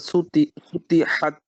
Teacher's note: এই সিন পাতলা এই ত মোটা